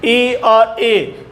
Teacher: तालवे से इनकी आवाज आ रही है